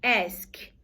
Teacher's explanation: O ask, o K, não vibra as cordas vocais.